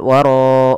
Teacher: huruf 'r' tebal karena merupakan ro tafkhim. A' ro 'that dibaca tebal karena memiliki vokal fathah.